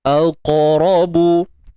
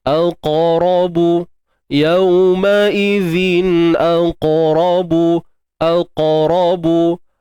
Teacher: Huruf qaf yang sukun qalqalah sughra. Lantunan. Kita lantunkan dan jangan lupa, walaupun dia sughra tapi sifat isti'la masih perlu dipelihara.